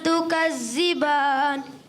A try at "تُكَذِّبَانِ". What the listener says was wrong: تُكَذِّبَانِ، ذال کو بھی کلیئر کرنا ہے۔